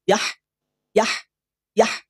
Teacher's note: ha sukun alirkan napas alirkan suara jangan diputus